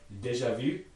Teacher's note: it has a high front rounded vowel